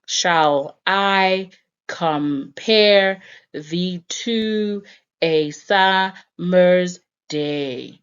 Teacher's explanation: So it creates a bada, bada, bada, bada, or da-dum, da-dum, da-dum type of rhythm, where one syllable, like shall, is short and is said in a short manner, and I is actually stressed, so it sounds like a longer syllable.